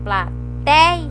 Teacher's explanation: Então é o ei que é mais forte, por isso que ele é paroxítona.